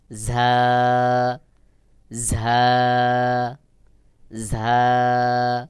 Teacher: ঝার আওয়াজ বাহিরের দিকে হালকা বাতাস বের হবে এবং আওয়াজটা একটু শক্ত শক্ত মত করে উচ্চারণ হবে যেমন ঝা ঝা উচ্চারণের ক্ষেত্রে বাহিরের দিকে অবশ্যই বাতাস বের হবে